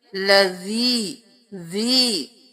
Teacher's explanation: تبارک الذی، اب لذی کریں گے تو زا سختی سے ہو جائے گا، لیکن ہم نے اس دال کو نرمی سے ادا کرنا ہے تو ہم پڑھیں گے لذی، دونوں دانتوں کے درمیان رکھ کے